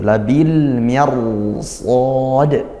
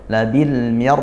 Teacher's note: sejak ra sukun pangkal lidah langsung dinaikkan karena dia tebal